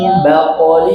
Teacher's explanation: iqlab ini bagian daripada gunah kita masukkan ke hidung sempurna di hidung dua bibirnya rapat